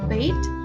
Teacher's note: it is in the front area of the tongue, and the height is mid